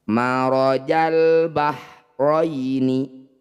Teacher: bunyi lamnya dibaca jelas dibaca terang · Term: izhar Qariah